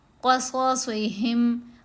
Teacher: صاد کو دونوں جگہوں پر موٹا پڑھنا ہے، قاف کو بھی.